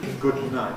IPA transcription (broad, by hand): ˌgʊd ˈnaɪt